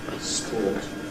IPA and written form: spɔːt (sport)